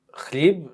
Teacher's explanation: And you don't notice, like in my last name, it's KH. It's actually guttural ch sound, but in English people cannot do guttural ch.